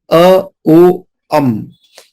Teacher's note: पूरा mouth open करके बोलना है, पार्शियली माउथ को क्लोज करके बोलना है, और माउथ को पूरी तरह से क्लोज करके बोलना है